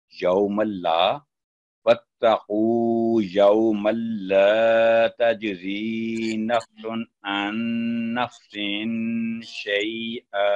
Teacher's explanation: یوم اللہ لام کے ساتھ الف ہے، تو ٹو سیکنڈ اس کو لمبا کریں گے